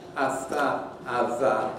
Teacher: You'll find that, in fact, a-tha, a-tha are made with the tongue often just behind the teeth